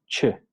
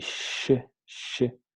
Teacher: la lengua cierra por completo y sh, la lengua no llega a tocar. No llega a tocar.